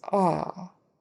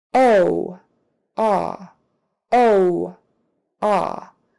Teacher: Lips are definitely more rounded for the long O. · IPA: /oʊ/